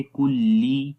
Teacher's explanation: काफ बारीक है और काफ को लाम के साथ मिलाएंगे, कुल्ली, लाम को ली पढ़ेंगे, ले नहीं पढ़ेंगे, कुल्ले नहीं पढ़ेंगे।